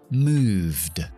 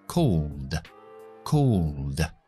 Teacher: O el verbo moverse, move, en pasado, moved. No pronuncio la E, pronuncio la D porque va después de la V, que V es sonoro. Move, v, v, vibrando, moved.